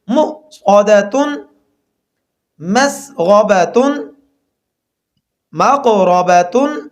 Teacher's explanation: واو کے اوپر حمزہ ہو اور حمزہ کے اوپر جزم ہو، دونوں صورتوں میں جھٹکا دے کر پڑھیں گے